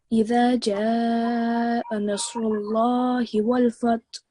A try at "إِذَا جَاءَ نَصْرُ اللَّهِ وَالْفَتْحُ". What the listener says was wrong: Excellent. Well done.